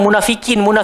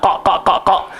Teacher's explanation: dia keluar dekat pangkal lidah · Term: huruf qaf